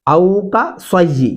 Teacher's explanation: یہاں پہ سواد پڑھنا ہے، او کا سئی سین نہیں پڑھنا